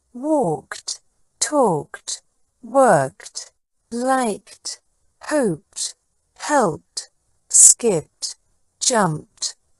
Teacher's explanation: the past tense ending e d is pronounced with a t sound instead of a D sound this happens when the verb ends in an unvoiced sound such